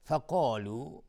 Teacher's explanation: قاف از حروف استعلاس غلیظ تلفظ میشه